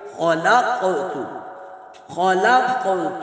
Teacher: ذرنی ومن خلقت، ومن خلقت، خاء کو پر کر کے پڑھیں گے. خلق، قاف ساکن پر قلقلہ کریں گے